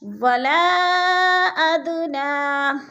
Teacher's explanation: حروف مدہ کے بعد حمزہ دوسرے کلمے میں ہے تو مد منفصل. 4 الفی مد ہے، ہم نے اس کو 4 حرکات کے برابر کھینچ کر پڑھنا ہے، یعنی لمبا کرنا ہے.